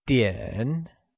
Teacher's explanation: it is pronounced using a falling rising tone